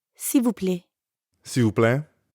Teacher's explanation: when speakers are in a hurry, that L sound at the end often gets left off.